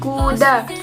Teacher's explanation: K adalah bunyi konsonan yang diucapkan dengan menutup sementara bagian belakang mulut dan langit-langit dan melepaskan udara dengan tiba-tiba.